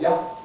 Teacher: the pronoun you has a Cockney weak form ya